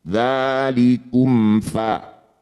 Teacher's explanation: Mim sukun baca jelas tidak usah dengung, baru pindah ke huruf berikutnya. Dzalikum fa, jangan digabung. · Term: ilhar syafawi